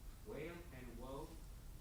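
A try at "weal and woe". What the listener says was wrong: Wheel, not whale. Wheel. Wheel and woe. No, W-E-A-L. W-E-A-L.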